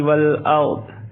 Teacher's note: والارض را کو پر پڑھیں گے، را سے پہلے زبر ہے